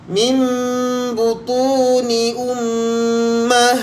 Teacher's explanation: Jadi bacaan kita mim butuni. Okey, kita hanya sekadar rapatkan bibir sahaja. Tapi kita kena baca dengan dengung lah. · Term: iqlab